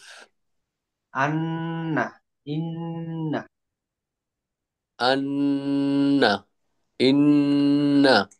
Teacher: নাকের বাসি হইতে গুন্নাহ উচ্চারিত হয়